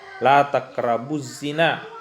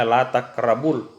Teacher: Nah, itu za termasuk salah satu huruf syamsiyah, sehingga alnya tidak terbaca.